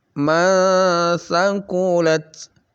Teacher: Jadi disamarkan sa-nya ya, nun sukunnya disamarkan lalu dikasih dengung. Dengungnya itu pertengahan. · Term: ikhfa wusta